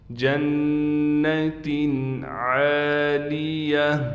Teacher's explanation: عین کے بعد الف ہونے کی وجہ سے عین کو ایک الف کی مقدار کھینچیں گے، اور گول تا وقف میں ہا بن جائے گی۔